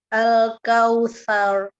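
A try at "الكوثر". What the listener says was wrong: Sa-nya kurang terbuka mulutnya lagi. Nah, jadi sa-nya kebuka. Buka. Jadi al-kautsar, depannya sa dulu, baru ro-nya masuk. Al-kautsar. Bacanya al-kautsar. Nah, sekarang al-kautsar. Nah, dia naik kautsar. Ya, jadi jangan kautsar.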